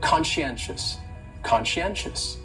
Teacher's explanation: So conscientious has 4 syllables, and the stress is on that third syllable, that N, conscientious, conscientious. That second syllable is what really confuses people, because that SCI almost sounds like you're saying she.